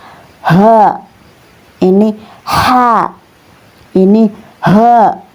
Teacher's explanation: Ini huruf ha ya keluarnya dari pangkal tenggorokan atau aqsal halaq.